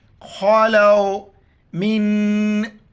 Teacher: یہاں پر اخفا کریں گے، ناک میں ہوا چھپائیں گے